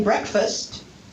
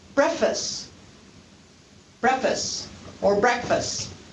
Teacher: leaving out the k or leaving out the t or leaving out both of those sounds in the cluster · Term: deletion